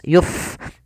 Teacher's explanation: Pada lafal pada lafal fa ada fa yang dia sukun, memiliki sifat hamas, maka dibaca dengan mengalirkan nafas